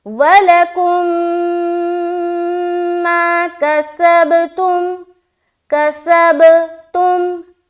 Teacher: یہاں پر ہم کو کرنا ہے میم کو میم سے ملا کر غنہ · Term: ادغام شفوی